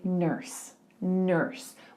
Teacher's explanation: in somewhere like California they would say nurse nurse with that r that bunched R